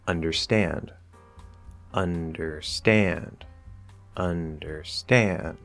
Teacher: Some three-syllable words will have two stresses, like understand, understand, understand. The primary stress or the main stress is on that last syllable, but the un is also stressed in that word.